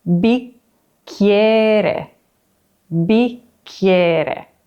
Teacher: double C makes a long K sound, and we also get this Y sound in the middle